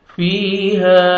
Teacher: یا مد ہے، یا ساکن سے پہلے زیر ہے، فا کو 1 سیکنڈ کھینچنا ہے